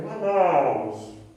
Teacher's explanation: Porque a sílaba tônica é na, né? Ou seja, é uma palavra paroxítona, não é oxítona